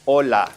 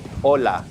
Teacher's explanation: We don't pronounce the H whatsoever. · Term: The H is silent